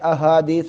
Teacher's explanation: ہا کی ادائیگی حلق سے ادا کرنی ہے